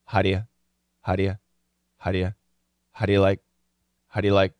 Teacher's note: the daily pronunciation of how is huh it's gonna be a schwa